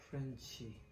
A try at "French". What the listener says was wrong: Is it French or French? F sound.